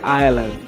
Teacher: Você tem aí algo similar a Island, né, na forma escrita, mas a pronúncia seria Island, né, tendo o som do I e inclusive não pronunciando esse S